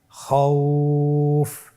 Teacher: এখন আমরা যদি লিনের হরফের বামের হরফটির উপর ওয়াকফ করি তাহলে আমাদেরকে এক আলিফ টেনে পড়তে হবে।